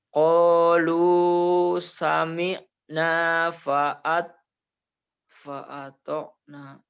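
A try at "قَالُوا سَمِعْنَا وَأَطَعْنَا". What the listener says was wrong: Bukan fa itu wa. Ainnya masih bias. Qalu sami'na wa ata'na.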